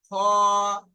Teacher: প্রথমটা আমরা পড়লাম হা, তারপরে খা পড়তে পারতাম কিন্তু খা পড়িনি। খ, মুখ গোল করে উচ্চারণ করে পড়েছি।